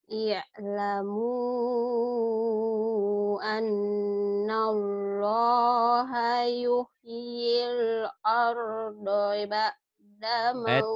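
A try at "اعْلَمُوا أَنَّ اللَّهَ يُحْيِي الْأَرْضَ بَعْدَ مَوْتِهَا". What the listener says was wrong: Bacanya sudah bagus, lagunya cuman lagunya kayak lagu ngantuk ini. Ilmu I'lamu annallaha yuhyil arda ba'da mautiha. Suaranya yang berapi-api.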